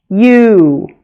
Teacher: U. It starts with a Y sound and sounds like we say you almost twice. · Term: Long U